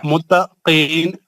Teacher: قاف حروف مستعلیہ ہے موٹا پڑھیں گے